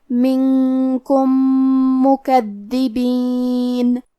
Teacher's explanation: میم حروف الادغام میں سے ہے تو ہمیں پہلے میم کو دوسرے میم میں ملا کے ایک ہی میم اور تشدید کے ساتھ پڑھنا ہے